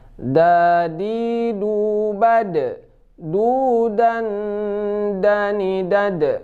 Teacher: Yang pasti da ini huruf jahar, tidak keluar angin, bukan da, bukan, ya.